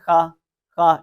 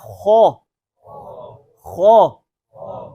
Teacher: मोटा करने के वही तरीका जो गुज़िश्ता असबाक के अंदर मैंने आपको बताया था कि जुबान को थोड़ा सा ऊपर की तरफ उठाना है तो हरफ मोटा हो जाता है। जुबान की जड़ जो है इसको ऊपर उठाएंगे तो हरफ मोटा हो जाता है